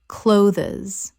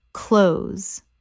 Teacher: One syllable only. The th is almost completely silent in natural speech. It rhymes with those.